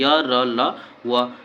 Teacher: उनका उच्चारण तालु दांत ओष्ठ के स्पर्श करने से होता है परंतु कभी भी पूर्ण स्पर्श नहीं होता है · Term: अंतस्थ व्यंजन